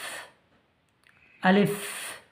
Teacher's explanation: আলিফ মুখের খালি অংশ হইতে উচ্চারিত হয়